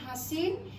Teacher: তাহলে হ হচ্ছে শীষজাত ধ্বনি। হ যখন উচ্চারিত হয় তখন স্বরতন্ত্র কম্পিত হয়। তাহলে আমি বলতে পারি হ হচ্ছে ঘোষধ্বনি। এই ধ্বনিটি যখন উচ্চারিত হয় তখন বাতাসের বেগ আমরা বলেছিলাম বেশি, তখন আমি নাম দিতে পারি মহাপ্রাণ।